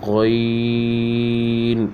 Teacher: غین، یہ حروف حلقی بھی ہے اور موٹا بھی ہے، ٹھیک ہے۔ پھر آگے آتا ہے فا، فا یہ حروف شفوی ہے۔